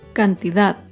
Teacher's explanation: Cantidad se acentúa en la última sílaba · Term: palabra aguda